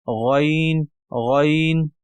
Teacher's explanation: जबान से पिछला जो हलक शुरू हो जाता है वहां से गन अदा करेंगे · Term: अदन उल हलक